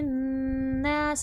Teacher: नासा नून पर तशदीद गुना होगा